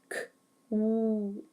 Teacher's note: making sure the W sound is very clear with the lips staying rounded the whole time